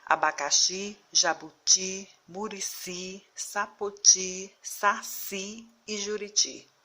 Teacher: nesse grupo de palavras a última sílaba é pronunciada com mais força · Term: sílaba tônica